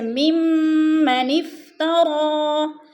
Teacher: ممن پہ جو ہے غنہ ہو رہا ہے، سختی سے جما کر پڑھیں گے اور ادغام کریں گے